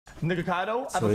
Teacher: if you're talking fast you especially then this happens right so the K goes to a sort of half G like a g